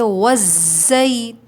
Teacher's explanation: واو ساکن سے پہلے پیش ہے، واو مدہ ہے، 2 کاؤنٹس کھینچیں گے